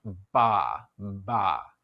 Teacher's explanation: you can actually feel down here if you want ba ba you might notice that your vocal cords start vibrating just before your lips part